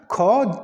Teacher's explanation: ख का जैसे ही आप उच्चारण खुद भी करेंगे तो आपको महसूस होगा कि जो वायु है वो अधिक बाहर निकल रही है तो वो क्या हो जाएगा वो महाप्राण हो जाएगा तो इस